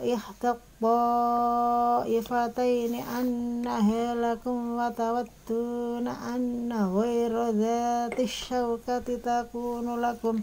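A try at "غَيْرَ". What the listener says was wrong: Tadi terbaca seperti kurang sempurna ya sukunnya. Jadi seperti ghayra. Ya, harusnya kan ghay, i. Anna ghayra dhati syawkati, bukan anna ghayra. Nah, tadi kan seperti e. Ya, harusnya sempurnakan ghayra. Bagaimana menyempurnakan? Cara menyempurnakan seperti ini tuh rahang bawah ditarik ke bawah. Ghay, nah, turun. Ghay. Itu memang caranya begitu.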